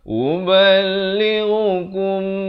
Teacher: Uballighukum ghain makhrajnya di mana? Di hujung kerongkong ini. Hujung kerongkong ini.